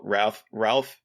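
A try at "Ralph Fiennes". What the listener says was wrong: Ray Fiennes. I think it's Ray Fiennes. It's like, you don't pronounce it like Ralph. No, you don't pronounce it like Ralph. You don't pronounce it like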